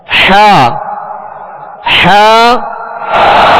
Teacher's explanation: عین حا کا ایک ہی مخرج ہے، وہ وسط حلق یعنی حلق کا درمیانی حصہ